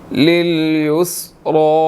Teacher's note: را کے اوپر کھڑی زبر ہے, موٹا بھی ادا کریں گے, اور کھڑی زبر ہے تو اس کو 1 سیکنڈ کھینچ کر پڑھنا ہے